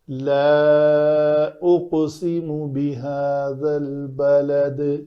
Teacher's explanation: اس کے بعد آگے والے کلمہ میں سبب مد بھی موجود ہے، حمزہ، تو اس کو ہم کہیں گے مد منفصل ہے. تو مد منفصل واجب کہتے ہیں اس کو. تو یہ 3 حرکات کے برابر لمبی کی جائے گی